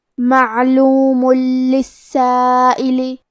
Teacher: اگر ہم یہ آیت کو اگلی آیت کے ساتھ ملا کے پڑھے تو کیونکہ حرف اللام کلمت للسائل حروف الادغام بغیر غنہ میں سے ہے تو ہم یہ تنوین کو لام میں ملا کے بغیر غنہ سے لیکن تشدید کے ساتھ یہ حکم کو ادا کریں گے